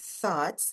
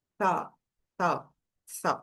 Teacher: você pronuncia o th com aquele arzinho passando entre a língua e os dentes e aí nesse caso a língua chega a ficar entre os dentes, ela não fica atrás dos dentes, senão você vai pronunciar o som de t, né?